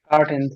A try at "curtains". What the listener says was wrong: কার্টেইনস। আমি বারবার কি বলছি, এখানে প্লুরাল আছে, এখানে প্লুরাল। কার্টেইনস, S. এই জন্য বলছি এস, ইএস, ইডি, তিনটা ওয়ার্ডের উপর ফোকাস দেন।